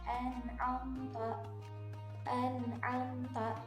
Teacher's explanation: posisi mulutnya itu dibulatkan sehingga suara yang keluar itu seperti huruf-huruf tebal